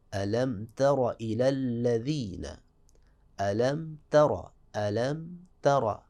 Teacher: تا جو ہے نہ تو یہ با ہے نہ یہ میم ہے، تو لہٰذا یہاں میم ظاہر ہوگی